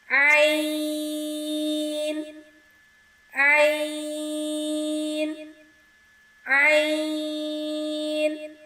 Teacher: عین، حلق کے درمیان سے ادا ہوگا۔